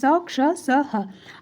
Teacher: उष्म व्यंजन होते हैं ये रगड़ और ये घर्षण से उत्पन्न होकर यानी उष्म मतलब गर्म वायु से उच्चारित होते हैं किस तरह से वायु से उष्म व्यंजन जो गर्म वायु होते